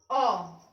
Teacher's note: अब देखिए मध्य स्वर क्या होता है, इसमें जीभ के मध्य भाग का प्रयोग होता है